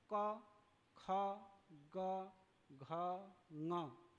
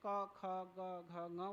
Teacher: क ख ग घ ङ, ये सारे के सारे कंठ से उच्चारण होता है, इसलिए इसको कंठ्य कहते हैं, कंठ्य वर्ण बोलते हैं इसको।